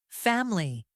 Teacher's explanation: This A is brighter and more forward.